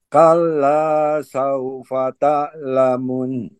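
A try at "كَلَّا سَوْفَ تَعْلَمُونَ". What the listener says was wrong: Ainnya tekan sedikit lagi. Saufa ta'lamun.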